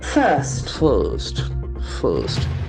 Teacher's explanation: we have the letter R after after I so that must be silent